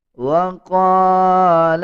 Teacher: قاف کو پر یعنی موٹا پڑھا جائے گا اور 1 سیکنڈ لمبا کر کے پڑھیں گے